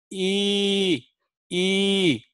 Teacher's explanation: e e is twice as long you're spreading your mouth a little bit more in a grin